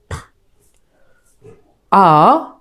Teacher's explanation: আ, মুখ বড় করে হা করে এবং একটু দীর্ঘ করে বলতে হবে।